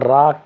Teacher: रा प्रकंपित होता है, लुंठित होता है